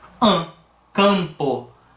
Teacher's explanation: como se fosse um fonema ali um a nasalizado ali com com tio em cima dele mesma coisa acontece em